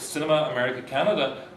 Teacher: the stress is 3 syllables away from the end of the word, the anti-penultimate pattern